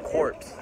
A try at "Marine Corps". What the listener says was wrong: It's the Marine Corps. You don't say the P.S. It's Marine Corps.